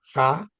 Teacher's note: The kha, that letter kha, K-H-A sound, kha, is a guttural from the throat.